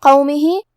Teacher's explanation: قاف کی ادائیگی زبان کی جڑ اور تالو کے نرم حصے سے